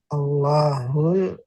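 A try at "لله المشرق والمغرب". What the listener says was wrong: Nah, ini bukan Allah. Nah, kalau ada alif, maka dibaca Allah. Tapi kalau nggak ada alif, itu artinya li, dia li ditambah alif, dan ditambah Allah menjadi lillahi. Nah, lillahi malah alifnya hilang. Jadi ini lillahi. Lillahil masyriqu wal maghribu.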